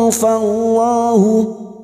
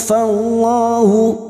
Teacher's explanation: lam jalalah yang sebelumnya fathah kita baca tafkhim